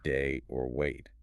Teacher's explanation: It's kind of its own unique starting point for this glide and it moves towards the eat sound. Or maybe think of it as ending in a very relaxed, higher front sound, a lazy e